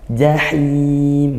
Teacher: kalau ha dari tengah tenggorokan